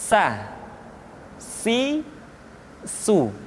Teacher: ujung lidah di antara dua gigi seri kita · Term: huruf sa